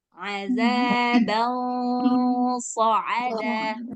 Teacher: Jadi setelah suara nunnya samar-samar, terus buat suara gunnahnya tebal.